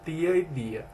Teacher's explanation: Verifique-se nas variações linguísticas do Maranhão o processo de dentalização de D e T, onde as palavras como tia e dia assemelham-se à pronúncia dos mesmos fonemas em tapa e data